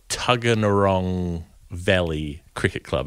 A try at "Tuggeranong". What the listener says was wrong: You could probably lose a couple of syllables there. Tuggeranong. That'll do.